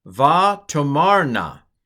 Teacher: this particular form uh accents the second to last syllable